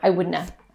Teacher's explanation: sometimes have is just the schwa sound it's just the uh